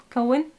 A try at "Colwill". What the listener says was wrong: Colwill? It's two L's.